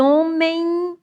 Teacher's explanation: Hífen termina num ditongo nasal.